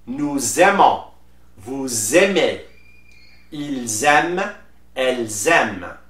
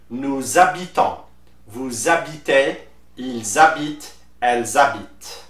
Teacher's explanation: make sure you put la liaison and you pronounce the se sound as ze